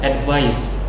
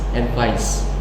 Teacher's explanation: Nah, penekanannya itu di akhir itu sebagai z, ya, z. Nah, sedangkan advice yang kedua dia sebagai kata benda itu penekanannya sebagai s